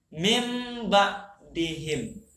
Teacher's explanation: Yang disembunyikan, jangan didengungkan, jangan dijelaskan min, jangan. Nunnya mati dihilangkan jadi mim. Seolah kita menyebut huruf mim. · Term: ikhlab